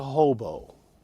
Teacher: Note that the stress of hobo, strong, weak, that the accented syllable is the first syllable.